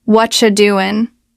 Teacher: The what are you part becomes whatcha and the g at the end of doing is often dropped.